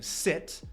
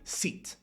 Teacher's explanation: I is shorter than E often